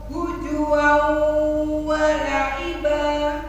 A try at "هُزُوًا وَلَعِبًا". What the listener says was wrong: Kurang mantap Z-nya huzu.